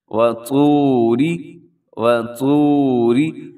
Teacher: را کے نیچے زیر ہے تو را باریک ہوگی۔ وَطُورِ سِینِین، سی اس کو بھی لمبا کرنا ہے، یہاں پر یا مدہ ہے، اور نی کو بھی لمبا کرنا ہے، وہاں پر بھی یا مدہ ہے۔